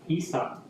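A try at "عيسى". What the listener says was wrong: Sa-nya panjang. Isa dua haruf. Ainnya. Isa. Isa.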